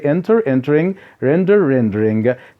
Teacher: two syllable the verbs ending in a consonant plus a vowel the stress is on the first syllable